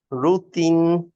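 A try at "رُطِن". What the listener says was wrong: আরেকবার ট্রাই করি, রুতে মুখটা রাউন্ড হয়ে গেছে, লিপসটা, হ্যাঁ, রুতিন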